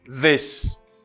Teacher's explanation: Voice TH, c'est le TH là, il y a une vibration